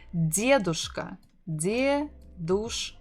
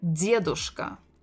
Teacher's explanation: stressing the first syllable